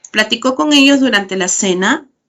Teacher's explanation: Esta oración es descendente porque es una oración enunciativa. Si yo la convierto en pregunta, entonces la vuelvo ascendente.